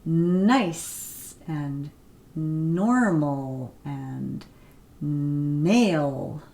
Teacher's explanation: You can see my tongue is touching behind the teeth on that bony ridge.